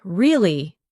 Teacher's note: when you ask a question like really, your voice goes up slightly at the end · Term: Intonation